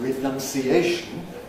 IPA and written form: rɪˌnʌnsiˈeɪʃn (renunciation)